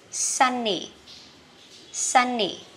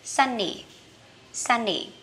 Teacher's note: Mình sun đi lên, còn nì đi xuống nha. Cái nào có dấu nhấn thì mình đi lên, còn không có dấu nhấn thì mình đi xuống.